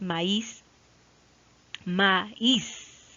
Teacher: Como la I, siendo débil, tiene la mayor fuerza de voz, pues tiene que tildarse o acentuarse ortográficamente. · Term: hiato